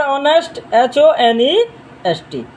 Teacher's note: No doubt honest it is begins with the vowel not vowel consonant because h it is a consonant letter but its sound is vowel. In this word h will be silent.